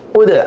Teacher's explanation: হামজা দাল পেশ উদ, এখানে কলকল হরফ আসছে, এই যে দালে জজম হয়েছে, যে এজন্য আওয়াজটা রিপিট করতে হবে।